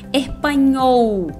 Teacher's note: Nunca o L no final de palavra vai ter som de U, como a gente costuma fazer em português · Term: som do L